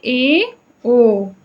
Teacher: अर्ध संवृत यानी आधा बंद। तो मुख आधा बंद रहे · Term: अर्ध संवृत स्वर